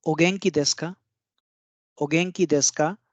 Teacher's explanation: So ka will have a rising intonation since this is a question.